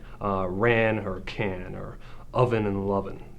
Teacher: And to be more specific, it's a rhyme in which the vowel and the succeeding consonants of the stressed syllable are in fact the same. It's just the initial consonants that are different. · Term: true rhymes